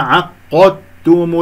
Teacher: التاء أدغمت في الدال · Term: إدغام متجانسين